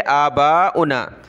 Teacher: बा के ऊपर मद है, इसको हमने खींचना है, वाव को नहीं पढ़ेंगे